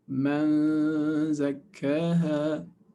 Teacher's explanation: So remember, for nun sakina, ikhfa with nun sakina, you're actually pronouncing and anticipating the next letter. So man, you say man, and then your mouth is in the position of zay. Man zakkaha with two ghunna harakat.